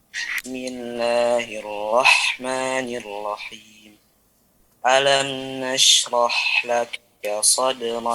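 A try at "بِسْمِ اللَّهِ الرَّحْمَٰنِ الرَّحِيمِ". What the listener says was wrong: Perhatikan pada lafaz ra ya tadi ya. Tetap ada getaran R. Ya betul, ya ada tebalnya. Tapi kalau tebal tanpa getaran R juga tidak Tidak betul. Ada tetap R-nya.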